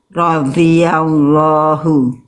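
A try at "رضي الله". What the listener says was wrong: Itu masih itu berarti Bunda pinggir lidahnya belum betul-betul nempel. Harus nempel betul-betul biar bunyinya nggak ada, bunyinya solid.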